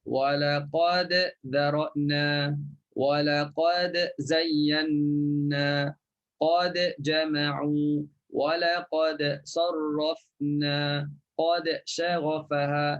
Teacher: Semuanya dibunyikan qalqalah jelas, ya. Dengan qalqalah surah lah.